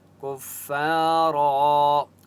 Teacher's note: را کو پر پڑھیں گے مستعلیہ کی وجہ سے۔